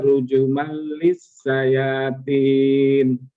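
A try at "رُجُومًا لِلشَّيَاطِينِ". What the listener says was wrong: Rujuman, ja-nya 2 harokat. Rujuman lisyayatin.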